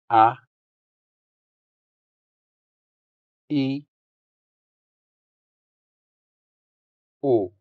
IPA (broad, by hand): a